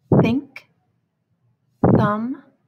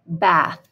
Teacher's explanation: and th at the end of any word is voiceless so th when it is voiceless says like bath it's very quiet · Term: voiceless th